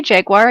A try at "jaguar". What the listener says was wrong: There is no U-I-R-E in Jaguar.